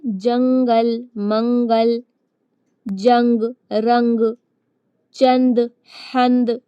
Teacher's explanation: تو جب بھی تنوین یا نون ساکن کے بعد ان 15 حروف میں سے کوئی حروف آئے گا تو نون کی آواز کو ناک میں چھپا کر اخفا کریں گے · ایک گننے کی آواز آتی ہے ناک میں، تھوڑا بھن بھنانے کی